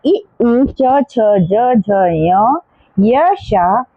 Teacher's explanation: इसके बाद है इचुषयास यानी कि तालव्याः, तो इ उ च छ ज झ य श एषां वर्णानाम उच्चारणम तालु स्थाने भवति, यानी कि इन सब वर्णों का उच्चारण तालु स्थान से होता है